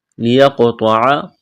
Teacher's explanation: قاف پر قلقلہ کریں گے